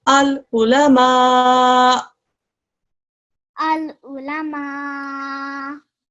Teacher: When we do waqf on this, because there's a dhamma on the top, when we do waqf, it becomes a hamza sakin. When you do waqf on a hamza sakin, there's a very slight jerk at the end.